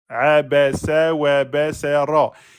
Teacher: attention de ne pas emphatiser le sa parce qu'il y a le ra.